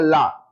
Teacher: ला बोलने में जीभ गोल घूम जाती है ना, और साइड से हवा निकलती है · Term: पार्श्विक